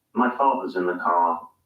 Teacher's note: the r sound is not pronounced unless it's followed by a vowel sound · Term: non-rhodic